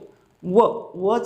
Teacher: वचा उच्चार करत असताना दात आणि ओट या दोघा उच्चार वापर करावा लागतो दंत ओट व व उच्चार करताना दाता ठना दोना स्पर्श होतो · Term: दंत ओष व्यंजन